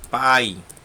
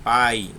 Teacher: Começa com a vogal A e termina com a semivogal I. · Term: decrescente